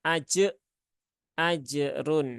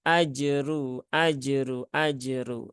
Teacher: Jim sukun jangan sampai ada tambahan Hamzah